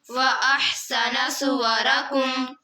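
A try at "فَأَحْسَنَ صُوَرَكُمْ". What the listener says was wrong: फ़ा पढ़ना, वाव नहीं पढ़ना। फ़अहसन सुवरकुम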